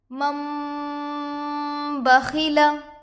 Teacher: نون کو میم سے بدل کر گنہ اور اکفا کے ساتھ پڑھیں گے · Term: انقلاب